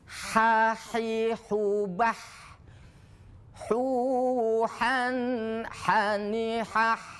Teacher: ha tempatnya di tengah kerongkongan